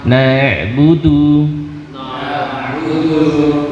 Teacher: Ain punya sifat bainiyah tawassut, sedikit mengalir suaranya.